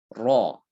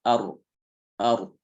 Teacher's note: bergetarnya ujung lidah pada saat mengucapkan huruf ro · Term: getaran